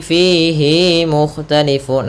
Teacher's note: Hati-hati jangan memanjangkan hi